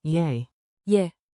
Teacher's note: For general availability in the lobby, pronunciation groove, feel the rhythm and keep it light. Say it like a quick, soft yay, yeah, with rising intonation, think two ascending notes.